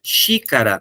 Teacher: então eu contei três sons e é a mais forte a terceira de trás para frente